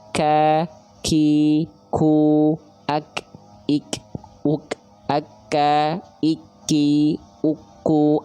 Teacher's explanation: Contoh huruf kaf itu dibaca gini ada percikan nafasnya.